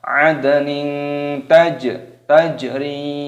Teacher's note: jimnya sukun dimatikan, dikolkolah, pantulkan suaranya. Tajri, nya panjang, ada ya sukun.